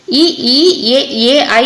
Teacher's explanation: வாய் திறக்கும் முயற்சியோட நாக்கின் அடி ஓரமானது மேல்பல்லை வந்து பொருந்துற முயற்சியில வந்து பிறக்குது